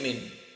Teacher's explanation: এখানে একটা গুন্না রয়েছে, নুন সাকিনের পর যদি ইকফার হরফ থাকে তাহলে গুন্না করে পড়তে হয়, গুন গুন করে নাকের ভিতর লুকিয়ে পড়তে হয়